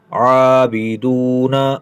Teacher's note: عین کو کھینچ کر پڑھنا ہے کھڑی زبر کی وجہ سے